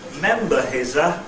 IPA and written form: ˈmembə hɪz ə (member his a)